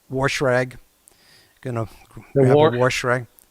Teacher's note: We also say wash with an R.